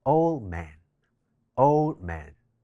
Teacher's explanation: old▁man中間嘅▁d▁省略咗之後就會變成▁old▁man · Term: 省音